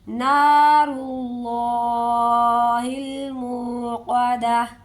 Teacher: را کو بھی پر پڑھیں گے، اور جو اللہ والا حرف ہے اسے بھی پر کر کے پڑھیں گے